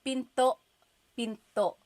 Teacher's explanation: Do you hear the glottal stop when I say pinto?